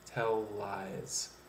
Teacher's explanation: the L at the end of tell and the L at the beginning of lies, so you can actually blend those two consonants together and make it into one sound. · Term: same consonant blends